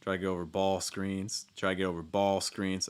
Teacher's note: I think there's a pretty clear stress on ball there